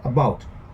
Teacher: it's easily distinguishable that the second syllable is more prominent.